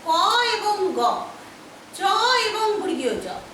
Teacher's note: 1 নম্বর এবং 3 নম্বর উচ্চারণ করার সময় নিঃশ্বাস জোরে বের হয় না, তাই এদেরকে বলা হয় অল্প প্রাণ। প্রাণ মানে হচ্ছে হকার জাতীয় যে ধ্বনি, তাকে বলা হয় প্রাণ।